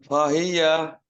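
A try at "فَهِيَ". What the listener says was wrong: ফাহিয়া না ফাহিয়া এভাবে তো দেরি করলে মাঝের মতো হয়ে যাবে। কোনোটা মাদ আছে নাকি?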